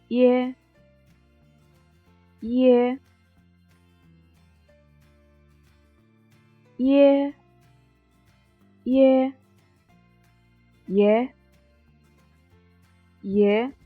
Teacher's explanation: we have to pronounce I in a not resounding but short way first. Then pronounce A in a resounding way with the tone slide from high to low.